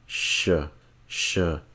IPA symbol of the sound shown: ʃ